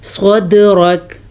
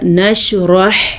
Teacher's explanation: صدرک، را پر اور دال کے اوپر کلکلا، حروف کلکلا آپ کو یاد ہوں گے، قاف، طا، با، جیم، دال، یہ وہ حروف ہیں جب ان کے اوپر جزم آ جائے، یہ جو ساکن اس کا نشان ہے یا جزم آ جائے تو یہ حروف جھٹکے کے ساتھ پڑھے جاتے ہیں، اسے قلقلہ کہتے ہیں۔ جیسا کہ صدرک، جیسا کہ ہم نے پڑھا نشرح، جھٹکا نہیں دیا ہم نے کیونکہ ح پہ قلقلہ نہیں ہے۔